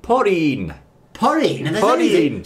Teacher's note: we don't have the L Sound in Japanese so in Japanese we're going to say porin